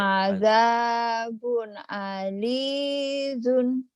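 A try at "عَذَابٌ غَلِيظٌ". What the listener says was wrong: bukan alidun ada titiknya Ibu. Adzabun ghalidun.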